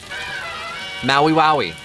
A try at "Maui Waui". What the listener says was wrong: You put the emphasis on the wrong syllable. Maui Waui. Maui Waui.